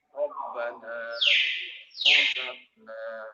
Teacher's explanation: roh ini dibaca tafkhim, dibaca tebal apabila roh ini didahului dengan huruf yang berbaris fathah atau dhamma